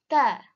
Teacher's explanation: T is the dental sound. The tongue touches the back of the front teeth.